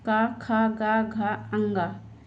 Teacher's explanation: सभी का वर्ग कंठ के अंतर्गत आता है